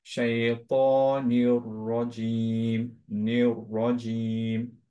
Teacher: দুইটা দুইটা র চিন্তা করবা, হ্যাঁ, দুইটা মিশে যাচ্ছে একটু।